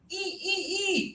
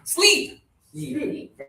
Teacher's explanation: The double E again means high tongue, not much air.